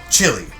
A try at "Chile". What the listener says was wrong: That's like Chile. You said Chile like the food or something. Chile.